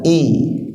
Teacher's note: Nah kasrah itu lebih condong kepada huruf ya ya ya sehingga dia ketika i ya itu agak ditarik kanan kiri